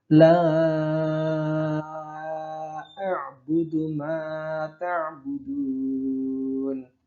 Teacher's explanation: Yang Pak Guru lingkari ini adalah tanda mad jaiz munfasil atau mad bertemu hamzah di lain kalimat, artinya 2 kata yang berbeda. La dan a'budu dibaca 5 ketukan.